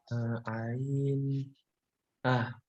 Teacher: ain itu letaknya ada di tengah tenggorokan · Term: huruf ain